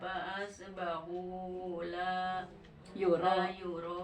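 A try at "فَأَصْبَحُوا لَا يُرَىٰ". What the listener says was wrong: Panjang lah, la yuro.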